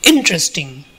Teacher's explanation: the first syllable is stressed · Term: word stress